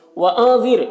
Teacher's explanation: نون میں اخفا ہوگا، نون کی آواز کو ناک میں چھپا کر پڑھیں گے